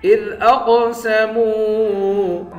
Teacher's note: اذ اقسموا، حمزے کو قاف کے ساتھ ملا کر قاف کو موٹا بھی پڑھیں گے، قلقلہ بھی کریں گے، میم کو واو کے ساتھ ملا کر ایک الف کے مقدار کھینچ کر پڑھیں گے۔